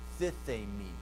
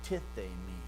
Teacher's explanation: it's just a deaspirated tau